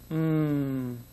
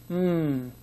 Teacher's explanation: says M you can feel your throat vibrating can't you m that M sound is a voiced sound you can feel the vibration in your throat